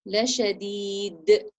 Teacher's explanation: The dal changes to a dal sukun because of the stopping sign. So we're going to echo the sound of the dal sukun. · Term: qalqala